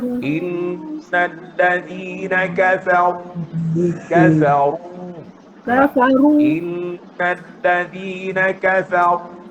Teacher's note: Yang pertama, ra pada kafaru. Ra tu kena tebal. Masa sebut ru tu, naikkan pangkal lidah.